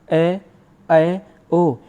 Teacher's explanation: जैसे ए, ऐ, औ, यानी अर्धविवृत में इनका जब हम उच्चारण करेंगे ए, ऐ, ओ, यानी मुख खुल तो रहा है मगर आधा खुल रहा है।